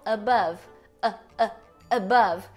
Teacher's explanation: Ela é chamada de vogal neutra porque ela é central, a língua não tá nem pra cima nem pra baixo, ela tá parada aqui no meio. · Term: schwa